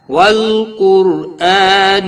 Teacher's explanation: را ساکن سے پہلے پیش ہے اس لیے را پور پڑھا جائے گا۔